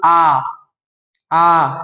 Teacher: है विवृत विवृत यानी मुख खुलता हो लगभग पूरा खुलता हो विवृत यानी मुख पूरा खुल जाता हो